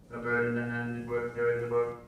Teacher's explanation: it's still flat and still buzzy and nasal